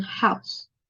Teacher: It is also closing diphthong because the oo sound is narrower than the ow sound, and then it moves from center to back. Ow sound is made in more closer to center than the oo sound.